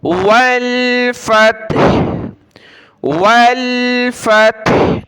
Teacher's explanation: آخر میں ہا کی آواز آ رہی ہے تھوڑی سی